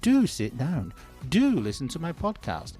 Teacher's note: Unlike ordinary auxiliary verbs, which are typically unstressed in speech, the emphatic do is almost always stressed.